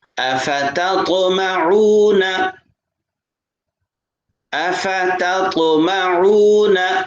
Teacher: پہلا تا ہے، دوسرا طا ہے، طا کے اوپر قلقلہ کریں گے۔